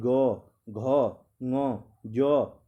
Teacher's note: ठीक है, कंपन, जैसे ग बोलो, ग में एक हल्की सी वाइब्रेशन टाइप की आ रही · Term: सघोष